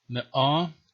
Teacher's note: And the word for 100, me'ah, we have the glottal stop in the middle, but yeah, it was probably pronounced maybe more like me'ah, or maybe ma, as in Syriac.